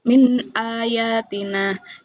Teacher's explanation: Cara membacanya jelas tanpa mendengung. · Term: izhar halqi